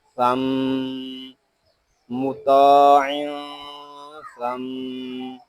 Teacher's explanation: یہاں اس کو ثم ایسے نہیں پڑھیں گے. میم شدد میں غنہ ہوتا ہے اور غنہ کی مقدار ایک الف تک ہوگی